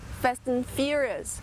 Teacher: Exatamente assim que a gente pronuncia em inglês, and. Mas quando a palavra and, ela é átona, ela não é uma palavra forte, tão importante na frase, o and vira an